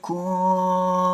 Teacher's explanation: Didengungkan dua ketukan, didengungkannya tipis, jangan tebal. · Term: ikfa syafawi